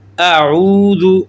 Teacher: او کو کھینچ کر پڑھیں گے 1 الف کے برابر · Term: واو مدہ